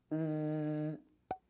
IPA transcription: z